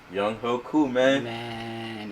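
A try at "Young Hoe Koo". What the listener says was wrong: It's Young Hui. Young Hui. No, it's not pronounced Young Ho.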